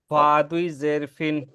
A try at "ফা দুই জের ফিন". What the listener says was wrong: আরেকটু বাতাস বের হবে। এই যে ফা ফা বললে এই যে দাঁতটা এই যে এই ঠোঁটের মাঝখানে লাগবে।